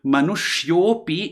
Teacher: When Manushyaha, ending in the Visarga, is followed by a short A, then the Visarga becomes O and the short A disappears. So Manushyopi is actually Manushyaha api.